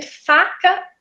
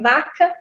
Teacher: acaba que acontece esse desvozeamento, né, da fricativa